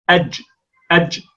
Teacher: يعني هي جيم مخلوطة بصوت الشين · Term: الجيم التي كالشين